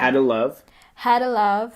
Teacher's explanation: Had ends in a D. To starts in a T, so we squish them together.